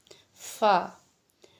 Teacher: इनमें हमारा होंठों का बहुत अहम किरदार अदा होता है कि कैसे हमने रखने अपने होंठ। फा, ऊपर वाले 2 दांतों का सिरा, नोक और नीचे के होंठ का अंदरूनी हिस्सा, इससे फा अदा होता है। ठीक है, यानी आपके सनाया उलिया जब नीचे वाले होंठ के तर हिस्से से लगेंगे तो आपका फा अदा होगा।